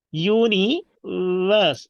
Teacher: when we come to verse sound, it will be labiodental, like v, universe.